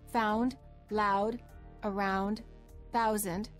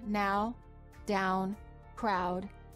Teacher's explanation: the u the lips begin to close and become more tense the tongue moves from a relaxed low position to a high position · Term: ow sound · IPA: aʊ